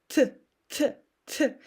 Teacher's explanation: I touch my lower row of teeth, and not only them, but also my upper palate. And I'm creating like this thing, which is pushing my teeth, and I get something like T, T, T.